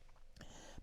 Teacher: و کبره را اینجا ترقیق است یا نازک تلفظ میشه چون قبلش کسره اومده